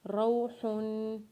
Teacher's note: ہا کے اوپر جب دو پیش پڑھیں گے تو ہا کے اوپر غنہ کریں گے، اور وقف کے بعد ہا کو ساکن پڑھیں گے۔